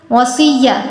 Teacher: وصیہ صاد پر تفخیم کی، اس کو پر پڑھا